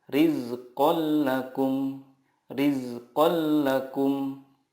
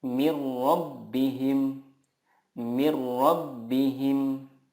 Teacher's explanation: meleburkan nun sukun ke huruf berikutnya tanpa gunnah. Contohnya, tanwin bertemu lam, rizqal lakum, rizqal lakum. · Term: idgham bila gunnah